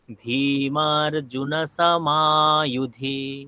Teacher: ভীমার ভিতেও দীর্ঘ আছে, মাতেও দীর্ঘ আছে, তাহলে আমাকে দু জায়গায় টানতে হবে।